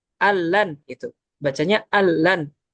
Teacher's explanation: bacanya al-lan dan nunnya itu hilang. An-nun ghairu mawjudah, nunnya hilang, tidak ada. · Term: idgham bi ghairi gunnah